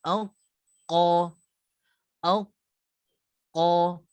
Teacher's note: untuk huruf qaf, sama saja dengan huruf ta, dia tidak ada qalqalah.